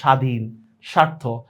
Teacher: বফলা শব্দের শুরুতে কোনো উচ্চারণই হয় না।